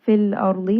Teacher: Fil ardi, lam has tawassut, ra has tawassut, ra is heavy because the letter before has a fatha. Da is going to be heavy, khusa daqtan permanently heavy letter.